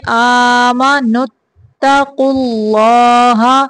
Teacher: اللہ کا نام موٹا پڑھیں گے